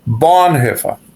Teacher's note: Mas tem outro problema que é uma palavra proparoxítona. A tônica é o é a primeira sílaba, então é bonhefa.